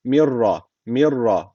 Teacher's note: şu Mim harfini şu ra harfine şeddeli şekilde bağlıyoruz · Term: idam bila gunne